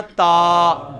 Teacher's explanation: تا زبر تا کے ساتھ ایک الف لگا دی جائے تو اس کی کھینچنے کی لمبائی اس سے ڈبل ہو جاتی ہے، یعنی یہ پورا الف بن جاتی ہے 2 حرکات، ٹھیک ہے نا. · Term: الف مدہ